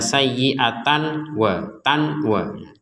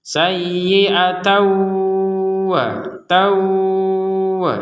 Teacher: huruf wau jadi jangan jangan dibaca sayiatan wa Tan WA atau dimasukkan kepada huruf wau dan jangan lupa disertai dengungan